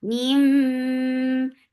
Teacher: For kasra, give E sound attached with mim. This is idgham with gunna, so keep the sound in your nose for a longer time.